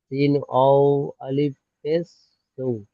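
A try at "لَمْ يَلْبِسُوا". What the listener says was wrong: ওয়াও আলিফ ধরতে হবে না। সিন অফেস সু, লাম ইয়ালবিসু। আলিফ পুরো খালি আছে, ওই জন্য বাদ যাবে। ওর উপরে কিছু থাকলে পড়া হতো, উপরে নিচে কিছু থাকলে পড়া হতো।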